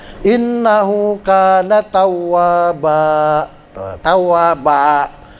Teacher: kalau Fatah tanwin kalau kita baca wakaf dia berubah menjadi Fatah biasa innahu kaana tawwaba tawaba tulisannya tawaban fathah tanwin ya jadi tawwaba